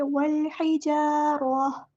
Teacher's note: ہا کو مستحلق سے ادا کریں گے، مڈل تھروٹ سے ادا کریں گے